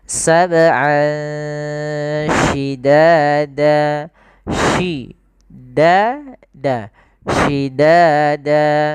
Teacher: Ini ada bacaan ikhfa. yaitu kita samarkan suara an ya ke huruf sin. Jadi terdengar seolah-olah dia ada eng gitu ya, tapi bukan ang, tapi dia ikhfa. Ikhfa itu membaca di antara izhar dan idgham.